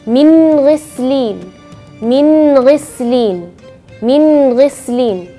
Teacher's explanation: huruf ghain yaitu di bagian paling atas tenggorokan